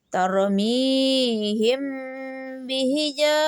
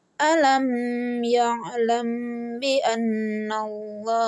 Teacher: Cara membaca ikhfa safawi dengan suara samar antara mim dan ba. Kemudian ditahan kira-kira 2 harakat seraya mengeluarkan suara ikhfa dari pangkal hidung.